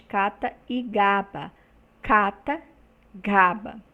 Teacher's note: causada pela essas por essa obstrução total da cavidade oral e o véu palatino também se encontra levantado né e o ar não consegue escapar pela cavidade nasal